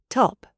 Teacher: The British T is known as the true T. It is crisp. It is sharp. It involves a small explosion of air.